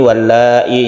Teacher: Wallahi ini mad wajib muttasil, kita panjangkan sampai 2,5 alif.